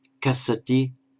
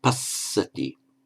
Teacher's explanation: Again, to highlight the distinction between the single and the double consonants, the words for ploughs and seas, they rhyme with each other apart from the doubling of the consonant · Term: single consonant